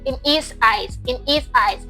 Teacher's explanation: Like the H is dropped. They don't say in his eyes, they say in his eyes, in his eyes, is, in his eyes.